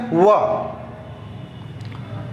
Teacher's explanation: ठीक है, दंतोष्ठ, दंतोष्ठ ये भी लिख सकते हैं। ठीक है, दांत और वोष्ठ से इसका उच्चारण होता है